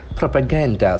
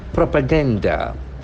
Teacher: So the accent falls on the second last syllable.